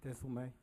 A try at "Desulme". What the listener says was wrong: Only Desulme. No, there's no Zul. It's not no Z. That's not no Z.